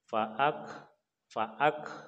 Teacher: kalau huruf kaf dalam keadaan mati maka kita keluarkan anginnya dengan syarat tidak ada yang menghalangi tenggorokan kita, kerongkongan kita sampai keluar, tidak ada yang menghalangi. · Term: kaf sukun